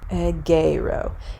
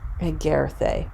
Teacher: notice how this epsilon changes into an eta. That's lengthening, because the eta is a long vowel and the epsilon is a short vowel.